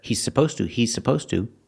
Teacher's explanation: you hear it together he's supposed to he's supposed to you don't really hear the is cuz you have the S